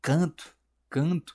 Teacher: O N ele é muito sutil. E essa sutileza vem da nasalização que a gente faz.